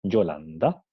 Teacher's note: Aquí tenemos una N dental, ¿no? Una N dental porque viene el sonido N, viene seguido por un sonido dental D.